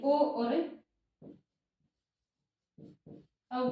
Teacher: ओ और अव का उच्चारण स्थान कंठ और ओष्ठ दोनों है। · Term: कंठोष्टम